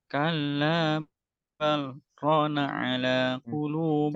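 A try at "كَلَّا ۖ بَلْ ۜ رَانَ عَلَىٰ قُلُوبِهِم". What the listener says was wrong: Jangan cepat-cepat, jangan kalla bal rona. Nah, kalau begitu nanti saktahnya hilang. Jadi diberi jeda Tapi tidak mengambil nafas. Saktah itu jeda tanpa mengambil nafas. Jadi kalau wakof itu kan jeda dengan mengambil nafas. Kalau saktah dia jeda tetapi tidak mengambil nafas. Jadi kalabal, bukan rona, enggak begitu.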